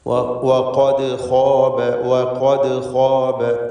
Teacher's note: വഖദ് എന്ന പദത്തിലെ ദാലിൻ്റെ സുക്കൂൻ ഖൽഖല സുഗ്റ നൽകി ശബ്ദം ഹറക്കത്ത് പോലെ ചലിപ്പിച്ച് വ്യക്തമാക്കേണ്ടതാണ്.